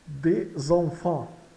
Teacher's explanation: Esse S tem som de Z porque está entre vogais, né? Entre o E de des e o E inicial de enfants. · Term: ligação